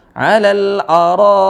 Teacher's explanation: alal araik dibaca 4 harakat atau 5 harakat ya. Karena ini adalah mad wajib ya.